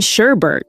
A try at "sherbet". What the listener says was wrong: No, that's the common mistake. It's actually just sherbet, no second R sound.